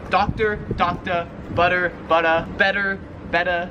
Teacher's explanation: how Australians pronounce the r sound at the end of a word so they just don't really pronounce it · the r is not really pronounced